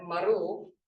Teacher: sometimes it becomes retroflex like maru, but it's the same